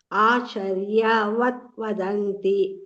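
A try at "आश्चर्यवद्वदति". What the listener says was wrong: ಅಲ್ಲಿ ನೋಡಿ ವದತಿ ಇದೆ ಅಲ್ಲಿ ಎಲ್ಲಿ ಅನುಸ್ವಾರ ಇಲ್ಲ ಮಧ್ಯದಲ್ಲಿ ಗಮನಿಸಿ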